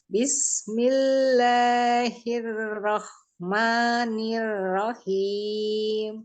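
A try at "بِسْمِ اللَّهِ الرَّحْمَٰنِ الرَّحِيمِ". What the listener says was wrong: Nah, coba jangan hiroh, ada kotornya. Karena huruf H itu ada pedesnya, bukan ada ngoroknya. Bismillahirrahmanirrahim. Ada hiroh. Jangan ada ngoroknya, walaupun sedikit nggak ada ngorok, karena kalau ada ngorok pasti dia sudah berpindah makhraj ke atas.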